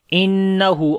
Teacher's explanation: On the noon there is shad sign, we make ghunna. Ha we long due to inward dhamma.